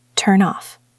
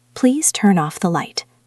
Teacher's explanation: N sound slides over. It becomes part of the second word. So instead of turn off, it sounds like turn off.